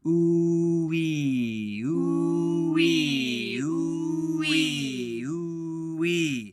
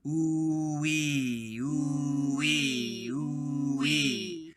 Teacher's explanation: So the lips start very forward and rounded and then pull back in the corners for that E vowel.